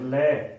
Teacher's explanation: जब इसका उच्चारण करेंगे तो जीभ के जो बगल है दोनों तरफ से वायु निकलेगी, इसलिए पार्श्व से निकलती है, तो ये लय पार्श्विक। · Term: पार्श्विक व्यंजन